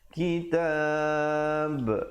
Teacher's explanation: diwakafkan dengan memberikan pantulan pada huruf ba. Walaupun huruf ba itu hidup, kita ba, tapi bila kita wakaf, dianya menjadi mati mendatang. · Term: qalqalah kubra